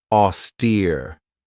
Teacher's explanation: This has two syllables and the stress is on that second syllable with that long e sound.